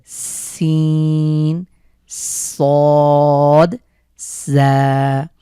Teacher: জিভের আগা সামনের নিচের দুই দাঁতের সাথে দিতে নিচের দুই দাঁতের আগার সাথে লাগিয়ে উচ্চারণ করতে হবে